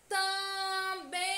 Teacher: A sílaba bem é a mais intensa, a que demora mais a ser pronunciada.